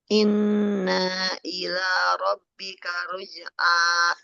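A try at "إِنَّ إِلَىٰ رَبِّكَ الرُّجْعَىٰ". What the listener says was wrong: Nah-nya jangan panjang, Bu. Inna ila, nggak boleh panjang.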